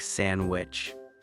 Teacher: And even the humble sandwich, many people don't pronounce the D. It's more like sandwich.